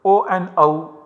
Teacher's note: From Kantha Oshtha, again, two places of articulation coming together, O and AU, are produced.